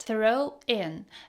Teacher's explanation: The W in throw and the I in in blend together, making it sound like throwing or throwing.